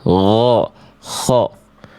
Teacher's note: Karakter nafas dari huruf kho itu lebih kasar dibanding huruf h kecil, lebih ada kerasak-kerasaknya. · kayak ghain dan kho dari ujung tenggorokan